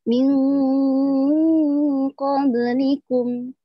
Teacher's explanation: samar-samar antara nun mati dan huruf yang di depannya dengan berdengung. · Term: ikhfa